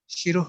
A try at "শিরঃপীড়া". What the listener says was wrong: বিসর্গ উচ্চারিত হবে না কোথাও। হ্যাঁ, বিসর্গ হচ্ছে মাঝে থাকলে পরের ব্যঞ্জনকে সে বিসর্গ কি করে দেয়? দ্বিতীয় করে দেয়।